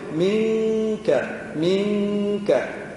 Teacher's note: آخر لسان يصعد إلى منك على مخرج الكاف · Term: الإخفاء